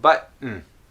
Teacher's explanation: you've stopped the air for the T sound, but instead of releasing, you just went button, and then went directly to the N.